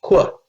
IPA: kw-